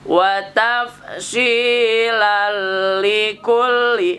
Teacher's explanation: Kemudian tanwin lan menghadapi lam menjadi lal, dilebur namanya idgham. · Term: idgham bila guna